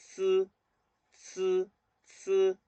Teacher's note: Fíjense, entonces la Z, la C y la S, también la posición va más sobre el diente, la lengua va más plana